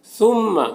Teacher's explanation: ثا کو باریک پڑھنا ہے اور یہاں پر میم مشدد ہے تو میم میں غنہ ہوگا